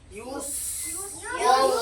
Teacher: সিনটা কিন্তু সিটি দিয়ে উচ্চারণ হয়